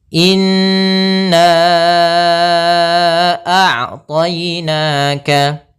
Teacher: panjangkan dulu nanya sepanjang 4 harokat atau 5 harokat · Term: mad jaiz munfasil